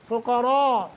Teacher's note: دونوں حروف مدہ ہیں ایک ایک سیکنڈ کی مد ہوگی فقراء قاف کو را کو دونوں کو تفخیم کر کے پڑھیں گے